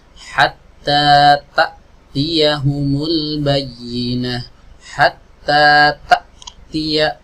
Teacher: berarti kan dia stop tidak bisa mengalirkan suara sama sekali makanya ketika kita membaca huruf hamzah sukun suaranya terhenti saat itu juga